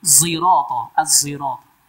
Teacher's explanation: az-zirata dengan zai ismam. Huruf zai yang condong ke huruf shad. Bukan zi tapi zi.